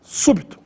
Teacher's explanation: a sílaba tônica é anti penúltima su e também recebe acento agudo no u súbito vamos a mais